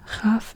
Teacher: Chaf is basically a throat K, like a deeper K